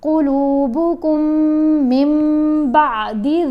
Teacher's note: پھر جب میم کو میم سے ملانا ہے، نون خاموش ہے کیونکہ قلب ہے، نون ساکن کے بعد با ہے نا، تو اب نون کی آواز کو میم میں بدلنا ہے، تو یہاں بھی غنہ کرنا ہے